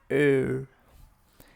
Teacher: First say A. Now say the A with rounded lips. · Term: O umlaut